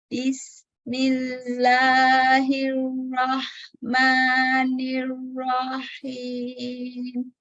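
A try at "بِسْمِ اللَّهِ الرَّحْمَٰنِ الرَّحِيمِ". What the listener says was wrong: Huruf H-nya kurang ke tengah ya, ke atasan. Kurang ringan ya alhamsnya. Rahmanirrahim gitu ya. Jangan terbawa karena kita rohnya tebal. Ya, jadi hanya tebal kan jadi ke kho.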